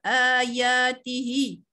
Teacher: Ya ialah mad asli, ada alif saghirah di situ, kena baca 2 harakat juga